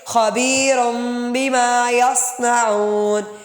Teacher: را دو پیش رن نہیں ہے، میم کی آواز آئے گی آخر میں